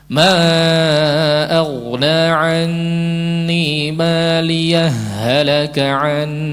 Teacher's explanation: Hak terakhir sukun diwasal kepada huruf berikutnya, hak menjadi idgham. Idgham bila gunnah. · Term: idgham mithlaini